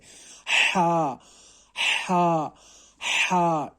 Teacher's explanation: اب آپ دیکھیے اپنی حلق پر، اگر یعنی کہ مطلب یہ کہ اگر آپ اپنے گلے پر اپنی انگلیوں کو رکھ کر، یعنی کہ ٹچ کرے گے اپنے گلے کو، یعنی کہ جو مڈل آف دا تھروٹ ہوتا ہے اس کو اگر آپ ٹچ کریں گے تو حلق کا جو بیچ والا حصہ ہوتا ہے وہ حرکت کرتا ہے